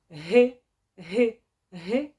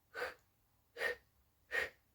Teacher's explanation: коли ми кажемо звук г г г у нас голосок дзвенить А коли кажемо х х голосок мовчить